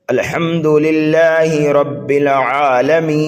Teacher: ٹھہرنے اور رکنے کے ہیں، یعنی جس کلمے پر وقف کریں تو اس کلمے کے آخری حرف پر آواز اور سانس دونوں ختم کر دیں، جیسے کہ الحمدللہ رب العالمین۔ تو عالمین پر ہم نے آواز بھی بند کر دی ہے اور سانس بھی بند کر دیا ہے